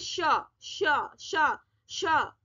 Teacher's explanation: श षटकोण में थोड़ी सी टंग दांतों के पास लगती है, तो श की आवाज आती है।